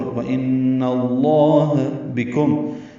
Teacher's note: با کاف باریک میم ساکن پہ اظہار شفوی